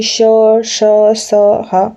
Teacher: तालु और जीभ के मध्य थोड़ी सी ऊष्मा निकल रही है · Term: ऊष्म व्यंजन